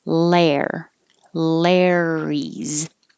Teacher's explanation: you're starting in the l position and coming back for the r